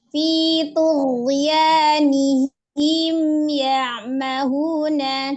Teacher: Huruf ghain itu memiliki sifat al-jahru, dibaca dengan jelas.